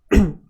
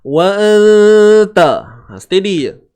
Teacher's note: Dengung kadar 2 harakat ikhfa hakiki.